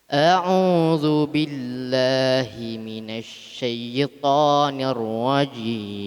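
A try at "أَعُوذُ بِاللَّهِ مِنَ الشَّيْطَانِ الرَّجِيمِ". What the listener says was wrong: Masih. Ya atasnya tasydid harus tekan. Asy-syaitan. Asy-syaitan.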